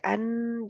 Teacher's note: आवाज ऑटोमेटिक अन जब कहते हैं तो वो नाक की तरफ आवाज जाती है, वो मुंह से बाहर नहीं निकलती क्योंकि मखरज बंद है आगे से